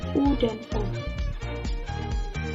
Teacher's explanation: vokal yang dihasilkan oleh gerakan turun naiknya lidah bagian belakang atau pangkal lidah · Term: vokal belakang